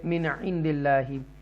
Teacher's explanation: نون ساکنہ کے بعد حروف حلقیہ میں سے عین ہے، نون کو کلیئر پڑھیں گے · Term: اظہار